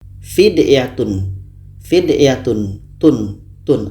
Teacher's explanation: tanwin ini ada di dalamnya bunyi Nun fidyatun fidyatun tun tun di ujungnya itu ada bunyi Nun jadi dalam tanwin ada bunyi Nun